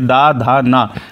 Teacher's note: जीभ जो है आपके दांतों को स्पर्श करेगी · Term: दंतीय